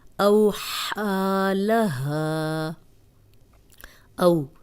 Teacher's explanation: جزم والی واو پیچھے زبر، نرمی سے پڑھیں گے، لمبا نہیں کریں گے۔ او ہا، ہا کو 2 حرکات اس لیے لمبا کر رہے ہیں کہ اس پہ کھڑی زبر ہے۔ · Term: واو لین